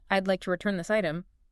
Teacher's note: If you go up at the end, I'd like to return this item, you sound unsure. You sound like you're asking a question.